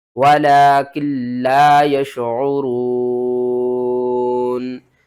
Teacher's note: جب ہم وقف کریں گے تو نون کو ہم ساکن کر دیں گے